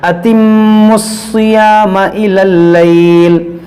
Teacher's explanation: یہ واو اور یہ الف لام یہ نہیں پڑھا جائے گا, یہ میم ڈائریکٹ صاد سے ملے گا